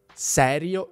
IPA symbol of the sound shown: s